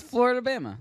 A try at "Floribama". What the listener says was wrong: No, it's Floribama. There's no D.